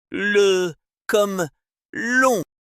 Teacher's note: Si la pointe de la langue vient toucher l'alvéole supérieur, on obtiendra un le et l'air passera par les côtés de la langue. On a ce qu'on appelle une apico-alvéolaire.